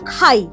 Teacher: খাইয়ের মধ্যে কি মিশে আছে? আ আর ই মিশে আছে। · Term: যৌগিক স্বর